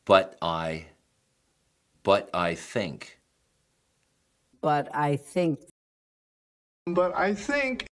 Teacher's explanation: 字 母 T 只 摆 姿 势 不 发 音